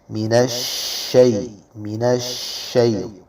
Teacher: شین میں آواز کو پھیلائیں گے صفت تفشی کی وجہ سے